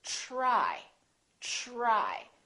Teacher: So the TR together make this sound almost like a CHR, almost like ch, but it's a softer one.